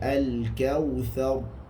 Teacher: menguatkan sedikit sifat takrir ataupun getaran pada huruf ra tadi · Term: tebal